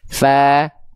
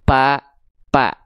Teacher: Fa dilafalkan dari ujung gigi seri atas kita ke bibir bawah bagian dalam yang basahnya biar keluar nafas. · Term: huruf fa